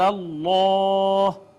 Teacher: اس میں جلالت کا ما قبل مفتوح مفخم پڑھا اسے